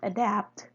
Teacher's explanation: carries two x values which makes it a heavy syllable therefore the stress is assigned on the ultimate position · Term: lexical stress